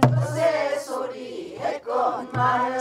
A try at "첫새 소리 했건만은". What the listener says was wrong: 소리 끌어내리지 말고 이거는 그냥 첫새 소리 했건만은 시작 첫새 소리 했건만은 강강술래